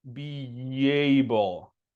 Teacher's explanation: Here you don't really add a little W sound, you add a little Y sound.